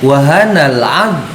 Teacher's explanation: Jadi mohon dipastikan ad itu tidak beda dengan huruf dal gitu ya. Dal itu memantul, kalau zo itu tidak boleh memantul